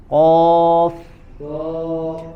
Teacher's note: Kalau huruf qaf dia isti'la tapi dia infitah, tidak memiliki sifat itbaq.